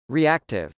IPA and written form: riˈæktɪv (reactive)